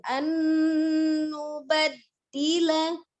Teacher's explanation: Ala an nubaddila tahan dulu nunnya. Nun sukun bertemu dengan nunnya, idgham dia gunnah. Gunnahkan dulu.